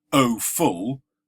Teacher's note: And the vocabulary I didn't give you, but describes O full, two stressed syllables. That's called a spondee, and it's a metrical foot of two syllables, both of which are long or stressed.